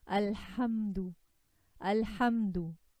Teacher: you notice the ha comes in straight with a very less gap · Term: letter of tawassut